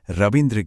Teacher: इ और इ के साथ भी बिल्कुल यही होता है। जैसे रवि की छोटी इ और इंद्र की छोटी इ दोनों मिलकर बन जाती हैं रविंद्र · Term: दीर्घ संधि